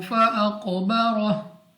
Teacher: अगर आप यहाँ पे रुकना चाहते हैं तो हा को साकिन कर देंगे और हा पे ही आपने अपनी आवाज़ को ख़त्म करना है